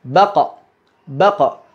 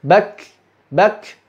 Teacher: Qaf ketika dilepas itu mengeluarkan suara baqa yang disebut dengan qalqalah. Adapun kaf ketika dilepas menghembuskan udara yang disebut dengan hams.